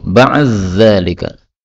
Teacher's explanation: di ketemu dengan za boleh idgham